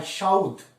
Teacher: উ স্বরটি যেখানে অবস্থান করছিল তার অব্যবহিত পূর্ববর্তী ধ ব্যঞ্জন ধ্বনির আগে এই উ স্বরধ্বনিটির উচ্চারণ ঘটেছে, তাই এই ধরনের পরিবর্তনকে বলা হয় অপিনিহিতি।